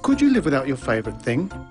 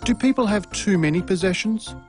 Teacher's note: The two questions the interviewer asks are yes no type questions. Rising intonation patterns are used for these questions.